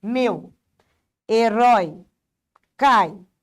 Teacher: Cresceu com o foi o decrescente vai fazer o contrário, né? Ele começa na vogal e termina na semivogal.